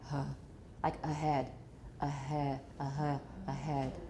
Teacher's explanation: vocal folds as though they were waving in the breeze so we haven't completely opened the vocal folds to make an open glottis they're partly open and we're still getting some voicing through the assimilation from the vowels around it so instead of · made with a vocal folds slightly apart along their entire length but still continuing to vibrate if it is between what two voice sounds vowels so if · if you put a h between two vowels, the h is probably going to be partially voiced, right? So they're continuing to vibrate, the vocal folds, as though they were waving in the breeze. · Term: voiced H